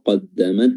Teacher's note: huruf dal makhrajnya adalah ujung lidah bertemu dengan pangkal gigi seri atas persis makhrajnya huruf ta